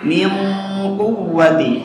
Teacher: Di situ setelah nun ada huruf isti'la jadi tebal ya.